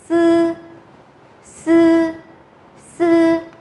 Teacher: Âm này là một âm có tắc sát. Vì thế nên là chúng ta sẽ phải nhấn mạnh cái tắc sát đấy ra.